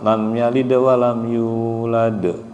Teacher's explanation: yang ujungnya itu baru agak pantulannya agak keras tapi yang pada saat yalid itu tidak terlalu keras